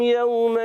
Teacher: جب یومن پہ ہم وقف کریں گے آیت کے درمیان تو یوما ہو جائے گا. ٹھیک ہے 2 زبر کی تنوین الف سے بدلے گی.